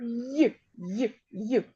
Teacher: це М'який приголосний звук це єдиний приголосний який завжди м'який